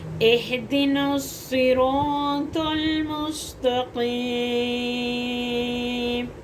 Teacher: صاد سیٹی والا پڑھا جائے گا اور موٹا بھی ہوگا اور سخت بھی ہوگا کیونکہ اس کے اوپر تشدید آ گئی